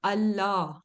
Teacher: You right away take the sound of lam and you completely ignore the noon. So it's like noon does not even exist. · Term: idgham bi ghayr gunna